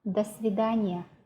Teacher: Like in the phrase до свидания, we don't pronounce it as 2 different words. We pronounce it as one word, and до becomes unstressed.